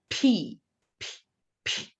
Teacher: to collect behind your lips so once again p p silence the vocal cords are not moving but only um make the lot sound silence nothing is moving